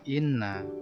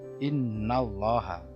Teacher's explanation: inna, nun bertasydid dibaca mendengung, yaitu bacaan hunna. Selanjutnya sama, Allah menjadi tebal karena inna, nanya kan fathah.